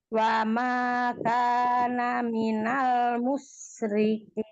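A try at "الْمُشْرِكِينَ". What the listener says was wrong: Tambah tafasyinya minal musyri.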